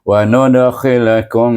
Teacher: Wa nudkhilkum dengan dengung dua harakat lebih kepada bunyi mim dan dengan bibir tertutup mim di sini. Kum bunyi kepada mim.